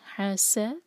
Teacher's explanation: सीन पर सीटी जैसी आवाज़ आनी चाहिए